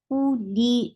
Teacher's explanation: This lam is light. This lam has kasra. Give E sound.